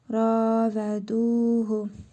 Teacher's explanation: Hə zamiri özündən əvvəl hərfi məd gəldiyinə görə qısa şəkildə oxunur.